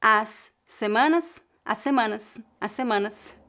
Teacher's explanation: ligamos as palavras as semanas porque uma palavra termina com s e a palavra seguinte começa com S então ouvimos apenas um fonema